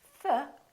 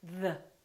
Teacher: We have two THs. We have a voiceless TH and a voiced TH.